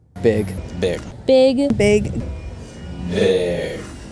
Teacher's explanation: in California, the kit vowel, I, is starting to move into the territory previously occupied by dress, E. So you get words like big suddenly sounding like beg. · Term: vowel shift